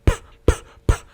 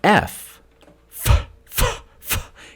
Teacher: voiceless bilabial stop is the P sound. P, P, P. But F, F, F, F, is a voiceless labial dental fricative. It's close, but it's not the same.